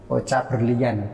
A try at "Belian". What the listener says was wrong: Tidak pakai R. Belian aja. Iya, belian. Beli. Iya, belian. Beli.